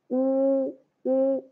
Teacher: You should keep your tongue back, back. U, u, and round your lips until there is only a small hole.